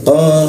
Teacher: lidahnya dinaikkan ke atas sehingga rongga udara terkunci dan tidak ada hembusan udaranya